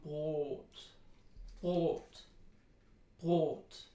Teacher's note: And it kind of rhymes with the word goat that we have in American English, but you probably know better by now that they're not exactly the same. The vowel in goat is a diphthong, and we don't want to diphthongize the vowel in Brot. And other than that, Brot has a long vowel, and that's important.